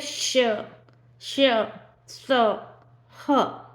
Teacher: इन व्यंजनों का जब हम उच्चारण करते हैं तो हमारे मुंह से वायु रगड़ कर गर्मी करती हुई बाहर निकलती है यानी कि मुंह से गर्म हवा निकलती है इससे बोल के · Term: उष्म व्यंजन, ऊष्म व्यंजन